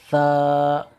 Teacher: के दांतों की जड़ से मिलकर ता अदा होता है सा ऊपर के दांतों का सिरा और सिरा जबान मिलकर सा अदा होता है